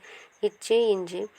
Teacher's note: நடுநாக்கு நடு அன்னத்தை தொடுவதால் பிறக்கின்றது